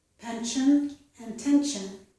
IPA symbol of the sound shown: ʃən